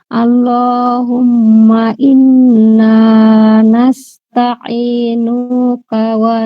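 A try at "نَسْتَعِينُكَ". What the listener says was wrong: নুকা, নুতে টান নাই, নুতে মাদ নাই, হ্যাঁ? নুকা এমন হবে না, নাস্তাঈনুকা।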